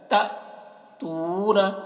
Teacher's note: حمزہ کے اوپر جزم ہے تو یہاں پر بھی جھٹکا لگ رہا ہے